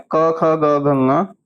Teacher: ये सभी के सभी जो होते हैं कहां से बोले जाते हैं? कंठ से बोले जाते हैं। ठीक है?